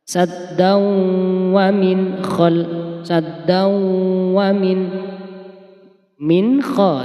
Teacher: Jadi langsung tanwin fathaten bertemu dengan huruf wawu. Maka harus dibaca idgham bi gunnah. Harus dibaca masuk saddau. Kemudian dikasih mendengung 2 harokat.